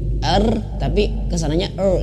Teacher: getarannya itu cuman di awal saja dan ini tidak melebihi dua kali